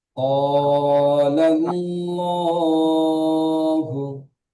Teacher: জি, লটি একালিফ টান হবে, কারণ এটা দেখেন খাড়া জাবার আমরা পড়েছি আলিফ মাদ্দার সমান হয়। খাড়া জাবার আলিফ মাদ্দার সমান হয়, তাই খাড়া খাড়া যাব জাবারকে আলিফ মাত্রা সমান, একালিফ পরিমাণ টান দিয়ে পড়তে হয়।